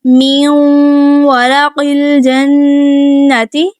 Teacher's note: واو ہے، گول ہونٹوں سے ادا کیا جاتا ہے تو ہم اپنے ہونٹ گلائی میں ہی رکھیں گے۔